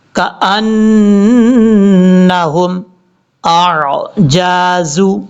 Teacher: دونوں کو کلیئر کر کے پڑھیں گے، حمزہ سختی کے ساتھ، عین نارمل طریقے سے